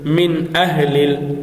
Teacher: মিন আহলিল এখানে নুন সাকিনের পর হামজা এসেছে, এখানে কিন্তু আমরা স্পষ্ট করে পড়েছি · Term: এজহারের হরফ